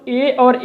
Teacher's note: ए और ए का उच्चारण स्थान कंठ तालु होता है, अर्थात कंठ और तालु के माध्यम से ए और ए को उच्चारित किया जाता है दोस्तों।